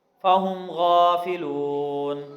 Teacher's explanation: فہم غافلون، غین کو موٹا پڑھیں گے لیکن اس کے اوپر کھڑی زبر ہے، ایک الف کے برابر لمبا کر کے پڑھیں گے۔ لام کے بعد واو مدہ ہے، اس لیے یہاں پہ لمبا کر کے اس کو پڑھیں گے۔ نون پر ساکن اس لیے ہے، ساکن اس کو اس لیے کیا ہے کہ یہاں پہ ہم آیت ہے وقف کر رہے ہیں۔